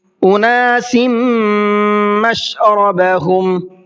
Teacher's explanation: اناس سین کے نیچے تنوین ہے اور اس کے بعد میں میم آ رہا ہے، تو یہ ادغام یرملون کا قاعدہ ہے، تو یہاں پر تھوڑا سا غنہ کر کے پڑھیں گے